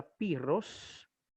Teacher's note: La doble ro se va a pronunciar como una R fuerte